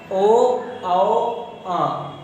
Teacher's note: कंठ और ओष्ठ दोनों वर्ण मिलकर के बनाते हैं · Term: कंठोष्ठ